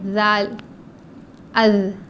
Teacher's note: زال میں زبان کی نوک اوپر کے دانتوں کے کناروں کو لگانا ہے. تو کناروں کو لگانے سے ہماری زبان تھوڑی باہر نکلتی ہے.